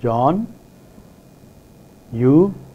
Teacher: rising tone, which starts from a lower level and goes up higher level